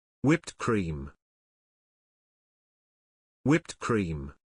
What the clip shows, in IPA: ˌwɪpt ˈkriːm